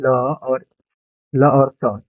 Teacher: ल और स क्या चीज से बोला जाता है जी दांत से बोला जाता है